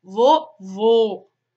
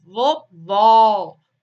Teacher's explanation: quando o circunflexo ele é usado ele faz com que o som da vogal seja emitido de forma mais fechada